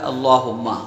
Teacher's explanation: حمزہ پر جو ہے زبر ہے، تو زبر کو بغیر کھینچے بغیر جھٹکا دیے پڑھتے ہیں۔